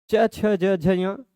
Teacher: च दांत से जस्ट ऊपर जीभ टच हो रही है। उस जगह को कहा जाता है तालु। ठीक है? तो इनका उच्चारण स्थान तालु है।